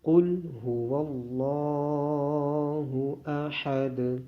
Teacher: اس میں قوف کو موٹا پڑھا جائے گا اور لام کی آواز بھی موٹی ہوگی۔ لام کے اوپر کھڑی زبر ہونے کی وجہ سے لام کو لمبا کیا جائے گا اور دال پہ قلقلہ کیا جائے گا